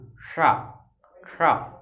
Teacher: जब देखना जीभ जो होगी हमारी तालू, शा, शा, तालु को टच करेगी तब बोलेंगे इसको शा। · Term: तालब